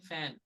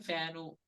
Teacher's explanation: people do is, because Telugu language has the ukara, the u sound, the short u sound at the end of many words, unknowingly and unconsciously, what many Telugu people do is they add that u sound to the end of all the English words